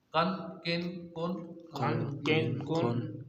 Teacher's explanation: पहला वाला काफ बारीक अदा होगा जुबान की जड़ और तालू के सख्त हिस्से से काफ अदा होगा